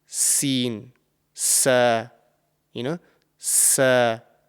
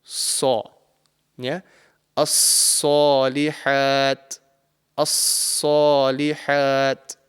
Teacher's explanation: So this would be the correct pronunciation, and this letter has the same articulation point as the letter sin, which is why there could be some sort of confusion when you're pronouncing this letter. But the top of the tongue is raised to the roof of the mouth to make it a heavy and thick sounding letter. So in this case, if we take the sin is a very light letter, Sin, sa, sa. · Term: saad